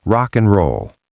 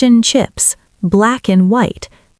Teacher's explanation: The D in and is almost never pronounced unless we are emphasizing it.